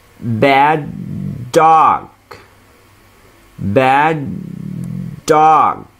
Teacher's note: لما يكون الكلمتين الكلمة الأولى بتنتهي بنفس الصوت اللي بتبدأ به الكلمة الثانية بننطق صوت واحد بس